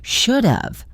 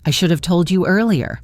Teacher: Should have is almost always contracted into a single quick sound. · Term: reduced form